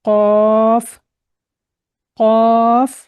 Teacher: तो हमें इसको अदा करते वक्त जो यह काफ इसके ऊपर दो नुक्त लगे हुए हैं इसको हमें पढ़ते वक्त एक तो हलक से निकालनी है आवाज और मोटा करके पढ़ लें